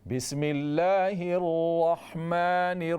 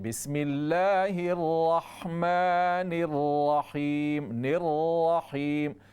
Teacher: تو را کے تفخیم کو، را کو موٹا پڑھنے کے لیے یہاں پر ہم پڑھیں گے بسم اللہ الرحمن الرحیم. نررحیم، را کو موٹا کریں گے بغیر ہونٹوں کو گول کیے ہوئے